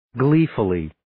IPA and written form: 'gliːfəlliː (Gleefully)